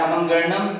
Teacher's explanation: पूरा नासिका से बोला जाता है अमंगणनम, जो कि 5 वर्ग के 5वें अक्षर हैं। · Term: नासिका वर्ण